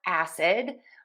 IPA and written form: ˈæsɪd (acid)